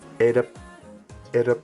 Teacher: So 2 high tones. So you're not starting low and going high, you're starting high and staying high